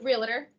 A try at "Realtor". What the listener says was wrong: Realtor, you put an A in there.